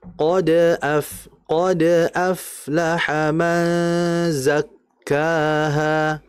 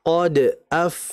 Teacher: kalau ada pantulan yang di tengah, artinya ayatnya masih nyambung, itu kan namanya qalqalah sughra. Maka kita harus meringankan pantulannya.